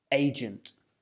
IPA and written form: ˈeɪdʒәnt (agent)